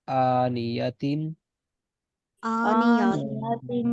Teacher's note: اس تنوین پہ میں نے اس وجہ سے غنہ نہیں کیا کیونکہ آگے حمزہ آ رہا ہے